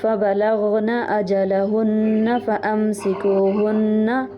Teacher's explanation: اچھا اس میں ایک چیز یاد رکھیے ، یہاں سے آپ دیکھیے فَبَلَغْنَ أَجَلَهُنَّ فَأَمْسِكُوهُنَّ، ہر نون کے بعد آپ کا الف بڑھ رہا ہے، تو اس کو ایسے نہیں کرنا، نون کے اوپر صرف ایک زبر ہے